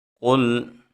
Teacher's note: قاف موٹے حروف میں سے ہے تو اس کو موٹا پڑھیں گے